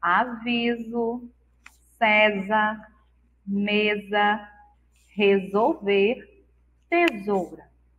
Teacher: o S no meio da palavra, entre vogais, tem o som de Z